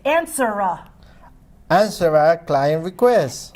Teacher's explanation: Take the R and link it to the A.